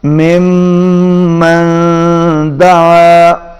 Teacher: نون ساکن کے بعد دال ہے، یہاں پر اخفا ہوگا، آواز ناک میں جائے گی